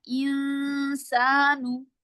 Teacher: गुनाह हम करते हैं ना तो जुबान इफा करते हैं तो जुबान को हम जो है वो नून के मखरिज पे नहीं लगाते बल्कि उसको हवा में बस ऐसे ही छोड़ दे